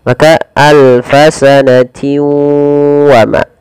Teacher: Ya, kemudian pada lafal maaf, di sini alfasanati wa ada bacaan idgham bi gunnah, yaitu memasukkan tanwin kepada huruf waw